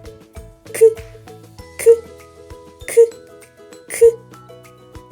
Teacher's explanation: звук к приголосний твердий глухий · так звук к приголосний бо повітря зустрічає перешкоду у вигляді язика А чи працює горло коли ми вимовляємо звук к Ні Тому цей звук глухий